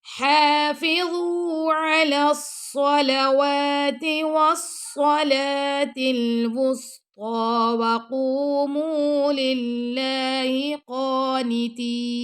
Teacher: حافظوا ہا پہ کھڑا زبر ہے تو ہا کو ہم 2 سیکنڈ تک لمبا کریں گے ، حافظوا ضا کو موٹا پڑھنا ہے اور نرمی سے بھی